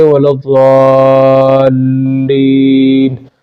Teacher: لام پر شد ہے تو لام کو جو ہے وہ جھٹکا سا دینا چاہیے